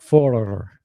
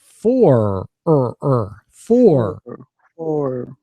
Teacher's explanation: we we don't roll the r